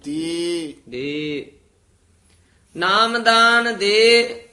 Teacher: ਐ ਨਹੀਂ ਬੋਲਣਾ ਯਯ ਨਹੀਂ ਲਾਉਣਾ